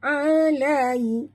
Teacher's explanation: ya sifatnya lin, lembut ya, baca ni macam kita tersenyum.